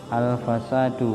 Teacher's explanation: Ini alif lam, al dibaca jelas, karena izhar qamariyah.